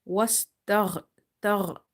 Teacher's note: ghain is again from the musta'aliya letters, heavy letters, or you can say full mouth letters, as well as ghain is from the top of your throat